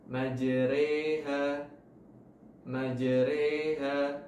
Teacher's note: jadi dibaca tipis ra-nya, jadi re